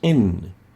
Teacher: In. As we pronounce the nun, we have a lingual articulation given also a nasal tone. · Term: nasal letter